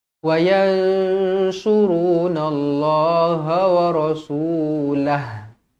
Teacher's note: nun kosong bertemu dengan shad ikhfa hakiki dengung dua harokat